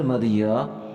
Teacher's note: یا کھڑی زبر مد یا، یہاں یا کے اوپر کھڑا زبر بھی ہے اور مد بھی ہے، اور یہاں پر جو مد ہے یہ 3 الف کی مقدار لمبا کیا جائے گا